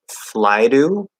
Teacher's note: we can change it into a flap D in this situation because that vowel sound is before it